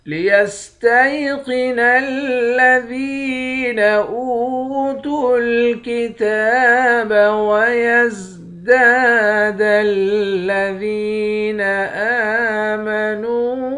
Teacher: دال کو یا کے ساتھ ملا کر یا کو بھی 1 الف کے مقدار کھینچیں گے، یا بھی حروف مدہ ہے۔